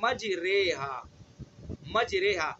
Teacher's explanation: تو ہمیں نہ الف پڑھنا ہے اور نہ یا پڑھنا ہے، دونوں کے درمیان کا پڑھنا ہے مجریہا. مجریہا، یہ دونوں کے درمیان سے، دو اصلی حرفوں کے درمیان سے جو نکلا ہے یہ کیا ہے، حرف فرعی. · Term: الف ممالہ